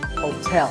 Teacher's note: There are 2 syllables, ho and tell, like the English word tell as in tell me. The stress is on the second syllable, so hotel.